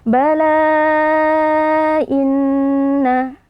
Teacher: nun tasdid dibaca dengan ghunah